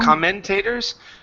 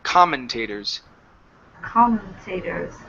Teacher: next one here is commentators okay instead of comment aters commentators stress at the very beginning